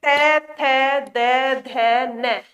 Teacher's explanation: जब हम त वर्ग उच्चारित करते हैं त थ द ध न तो जीव हमारी दांत को स्पर्श करती है